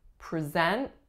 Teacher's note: we are putting a schwa on the first syllable our strongest syllable is the second